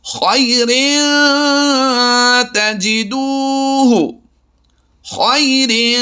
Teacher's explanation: یعنی ہم نے آواز کو ناک میں چھپا کر ادا کیا، ناک سے ادا نہیں کیا بلکہ ناک میں چھپا کر ادا کیا ہے. خیر تجدوہ، یہ پہلا لفظ تھا جس میں ہم نے اخفاء کی مشق کی ہے.